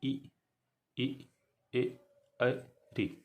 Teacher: इनको जब आप बोलेंगे तो लगेगा कि हमारे जीभ के आगे से ही आगे वाले भाग से निकल रहा है